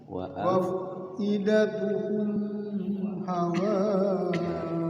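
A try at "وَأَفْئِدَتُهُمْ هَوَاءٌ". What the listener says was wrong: Jangan ditahan, langsung wa afidatuhum hawa. Idhar syafawi.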